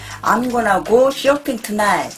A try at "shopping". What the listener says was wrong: 아, 근데 사실 쇼핑이라고 발음보다는 얘네는 아싸한테 가까워. Shopping.